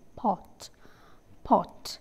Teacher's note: the vowel is called as a back open rounded vowel